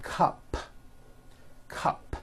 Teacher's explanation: It ends with an unvoiced P.